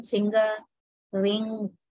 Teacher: And nga involves the back of the tongue and the velum. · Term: Voiced velar nasal